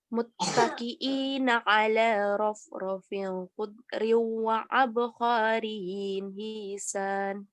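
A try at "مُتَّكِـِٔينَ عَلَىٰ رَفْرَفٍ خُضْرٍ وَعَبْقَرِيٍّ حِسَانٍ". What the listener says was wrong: Abqariyyin, kofnya pendek. Abqariyyin hisan, sa-nya yang panjang. Hanya ditipisin aja.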